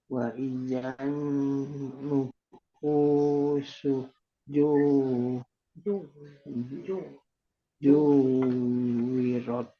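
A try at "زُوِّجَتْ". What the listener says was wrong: Zuwijat, bukan zuwirat. Zuwijat.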